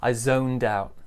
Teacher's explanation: Also, as you can hear, there's some linking too. The D joins the ow sound.